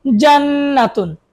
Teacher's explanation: নুনের উপর তাসদীদ গুণনা করতে হবে